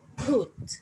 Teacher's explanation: we pronounce it with an aspirated p and then we have a glottal u so put [Music] le